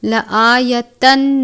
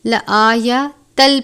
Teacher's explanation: لآیۃ لکم، تنوین کے بعد لام مشدد ہے، لام مشدد حروف یرملون میں سے ہے، ادغام کا قاعدہ لگتا ہے لیکن لام اور را پر غنہ نہیں کرتے۔ لآیتن نہیں پڑھیں گے بلکہ لآیتل پڑھیں گے، تنوین کو لام مشدد سے ملا کر